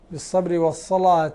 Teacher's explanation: الصلاة بتغليظ اللام هذه للإمام ورش